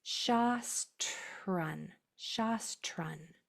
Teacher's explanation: Spit out that T and don't let it change into a sloppy CH or a J sound